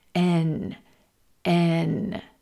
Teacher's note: the tip of the tongue pressed against the alv ridge or the Bony bump right behind the top Front Teeth and air travels then into the nose for this nasal sound